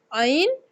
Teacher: आइन और हा हलक के दरमियान वाले हिस्सा से अदा किए जाते हैं।